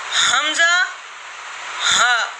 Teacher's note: मखरज number 2, अक्सा, अक्साए हलक, यानी हलक का आखिरी हिस्सा जो सीने की तरफ है, या यहाँ से 2 हुरूफ अदा होते हैं, हमज़ा हा, ठीक है।